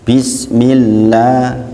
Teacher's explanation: ada hukum tarkik tipis dan ada mad tabi'i, yaitu dibaca 2 harokat